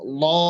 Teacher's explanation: আমরা এমনিতে লাম জবর লা পড়ি, কিন্তু লাম যখন মোটা হবে তখন হবে ল। ল লামের মাখরাজ ঠিক রেখে জিহ্বার গোড়াটা যদি আমরা উপরের দিকে উঠিয়ে দিই তাহলে লাম মোটা হয়ে যাবে